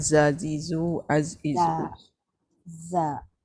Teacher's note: Dia Safir Safir. Dia berdesir, ada desiran seperti bunyi binatang. · Jadi dia jahar lah. Dia jahar, dia tak ada angin.